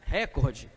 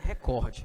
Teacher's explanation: A tônica, ela é na penúltima e não na antepenúltima. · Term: paroxítona